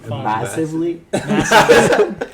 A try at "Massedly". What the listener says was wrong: Massedly. No, it's not a V, it's a D. Masood, like my last name.